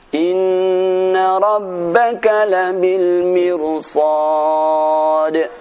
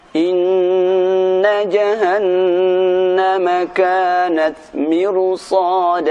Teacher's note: Mirsad dan labil mirsad dibaca dengan tebal walaupun sebelumnya ra berupa kasrah